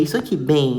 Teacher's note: esse M, ele tem som de I, ele tem som de semivogal. Então, ele não vai ser dígrafo vocálico. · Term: ditongo fonético